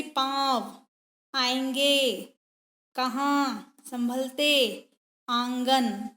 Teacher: मां स्वर में परिवर्तन आएगा आवाज मुंह और नाक से निकलेगी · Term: अनुनासिक, चंद्र बिंदु